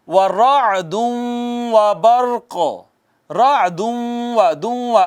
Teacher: نون تنوین، اس کے بعد واو حروف ادغام میں سے، ادغام بالغنہ ہو گیا